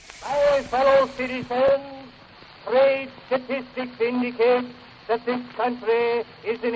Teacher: it's a tapped or trilled R not the kind of R sound that we find in modern American English